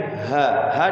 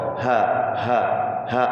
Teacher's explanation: kemudian ha di bawah tenggorokan. Ha ada anginnya.